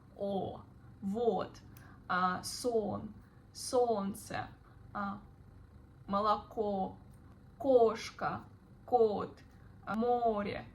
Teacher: Sound maybe a bit harsh. Make the sound O more rounded, as in the word boat